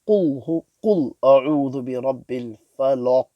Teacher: The lam of the falaq and the lam of qul is pronounced full mouth.